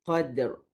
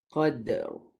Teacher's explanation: Dal tu qalqalah dulu. Lepas tu barulah timbulkan huruf ra.